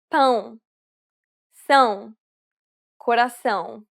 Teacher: It is similar to the ow sound in English, but with nasality. Saying the word pound repeatedly may sometimes help with pronouncing this sound.